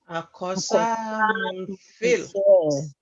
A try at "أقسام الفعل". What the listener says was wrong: You can see this cough is having sukun, but we are pronouncing it as if we are pronouncing it with fatha. That is what tajweed will teach you later in Quran when we start our tajweed series, inshallah. Aqsamul fi'l.